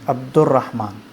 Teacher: دال کو را کے اندر مدغم کر دیتے ہیں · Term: ادغام